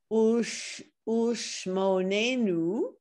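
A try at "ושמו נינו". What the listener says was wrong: It sounds like you're saying shmo.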